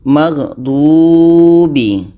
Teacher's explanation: Du ini panjang sebab waw mati. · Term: panjang waw mati